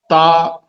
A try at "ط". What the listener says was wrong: تو اسے موٹا کیجیے، اوپر والا تا باریک تھا، یہ موٹا ہے.